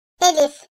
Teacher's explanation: Elif, boğazın en alt kısmından çıkarılır, ince sesli ve kuvvetli bir harftir. Türkçedeki E sesi gibidir arkadaşlar.